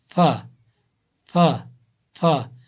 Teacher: फा फा थोड़ा जो सामने के दो दांत हैं ऊपर वाले वो थोड़ा बाहर निकलते हैं। फा फा फा सनाए उलिया का किनारा और नीचे के होंठ का तरी वाला हिस्सा